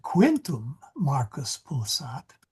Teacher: notice the way my voice emphasized Quintum